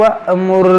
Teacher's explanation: یہ حمزہ ساکنہ ہے، اس کو جھٹکا دے کر پڑھیں گے